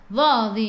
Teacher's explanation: hujung lidah keluar sikit sahaja pada gigi depan